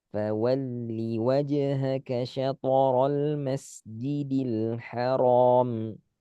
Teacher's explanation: syato lebih jelas qalqala, al-ha lebih desah tenggorokan tengah